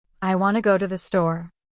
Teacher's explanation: Feel how go and store get more energy. That's English rhythm.